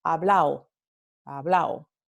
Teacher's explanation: Tenemos la omisión de la D en palabras que terminan con ado, ¿no? Entonces, por ejemplo, la palabra hablado, como yo he hablado, en el centro norteño se va a pronunciar hablao, hablao, ¿no?